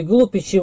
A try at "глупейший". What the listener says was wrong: Ударение-то не там.